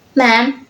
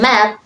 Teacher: For example, man with nasalized vowel and map no nasalization